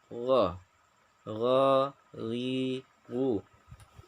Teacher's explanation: Gha itu halus dan lembut, tidak boleh ada serak. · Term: huruf ghain